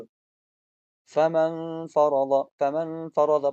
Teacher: فمن فرض پہ آپ اخفا کریں گے، یہاں پر اخفا مع الغنہ ہوگا۔